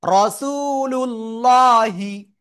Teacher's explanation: ঠিক আছে, লাম লাম পেশ লুল, আল্লাহ শব্দের লামের ডাইনে পেশ, এজন্য মোটা আওয়াজে পড়বো।